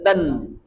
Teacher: त वर्ग आला अनुनासिकाच्या समोर, म्हणून या अनुनासिकाचा उच्चार काय होईल? नळाचा न.